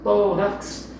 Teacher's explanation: Tórax, tórax. Veja que esse X aqui no final de tórax, ele funciona como um K e um S